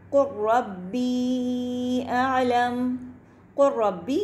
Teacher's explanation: قُلْ رَبِّي یعنی کہ ہم نے دیکھا کہ لام کے بعد را ہے تو را مشددہ ہو گیا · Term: ادغام